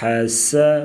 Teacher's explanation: آواز نکالیں گے گلے سے، جمع، ح زبر ح، باریک آواز، سین سیٹی جیسی سختی سے پڑھا جائے گا